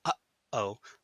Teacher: That kind of stop in the middle, uh-oh, that's a glottal stop.